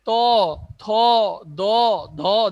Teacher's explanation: দেখো জিহ্বার আগা একটু বেঁকে গিয়ে দাঁতের গোড়ালিকে স্পর্শ হচ্ছে, অর্থাৎ উপর পাটি দাঁতের গোড়ালিকে স্পর্শ করে যে ধ্বনিগুলো উচ্চারণ হচ্ছে সেগুলোকে আমরা বলবো দন্ত ধ্বনি।